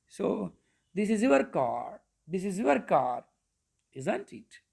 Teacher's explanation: When you are not confident, you can use rising intonation. When you are confident, you can use falling intonation.